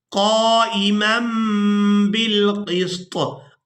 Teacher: तनवीन में जो नून की आवाज़ है इसको हमने मीम के साथ बदल कर अदा करने हैं और इसको कहते हैं इक़लाब करना।